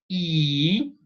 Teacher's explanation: the position of the lips so it is a spread it is like when you're when you are smiling · when you pronounce e you can pay attention that your tongue is going to go up and to the front